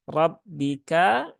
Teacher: ada mad asli kemudian rnya ya rnya terbaca tebal yabika karena rnya berbaris fathah maka rnya dibaca dengan tebal